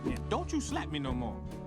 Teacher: T plus a Y sound in English, we often pronounce it like ch.